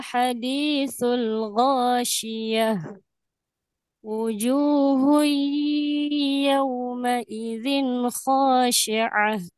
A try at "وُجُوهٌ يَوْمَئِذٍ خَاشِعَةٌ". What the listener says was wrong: sama di sini juga harus ada gunnahnya. Wujuhui hal ataka hadithul ghashiyah wujuhui wi wujuhui yawma idzin khashi'ah gitu. Ini ya catatannya di gunnah, iyanya kurang. Jadi tadi sempurna di mulut, ya. Padahal harus ada di hidung. Tadi bunyinya wujuhui.